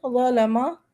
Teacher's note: لا کی آواز نرم اور موٹی ہے